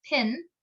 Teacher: the allophone in pin is aspirated, causing it to sound almost like a p, whereas the allophone in spin is not and sounds like p. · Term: aspirated p